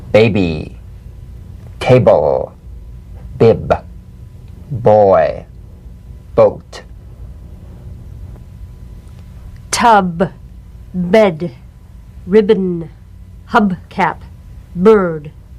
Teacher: the springing away from contact not by pressing the lips together you'll feel a gentle voiced pulsation on the lips like a delicate crisp tap